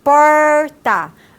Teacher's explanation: o retroflexo a ponta da língua é o articulador ativo e o articulador passivo é a parte posterior do palato duro